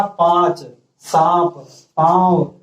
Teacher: बोलकर देखिए, तब आपको समझ में आएगा कि अनुनासिक जो है बोलते समय, इनका उच्चारण करते समय जो हवा है वो हमारे नाक और मुख दोनों से निकलता है